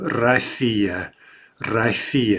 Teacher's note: Again, I think the U in English causes a little bit of interference here. And we pronounce it ra, right? Because of the vowel reduction.